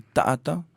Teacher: entre les deux A, il y a la glottale qui vient accentuer en fait le ta'a.